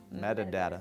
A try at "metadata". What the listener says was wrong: You're adding 7 syllables.